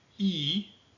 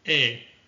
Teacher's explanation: the yod has lost its consonantal value. That is, it doesn't have a y sound like the English y. Rather, it simply indicates to pronounce a hirek e or a tsere e.